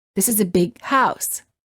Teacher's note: you would hold the G sound of the word big